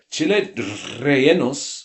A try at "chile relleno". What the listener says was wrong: It's not a double R. Relleno. There's no rolling.